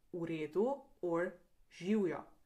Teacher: The letter V can also sound like U in words like v redu or živjo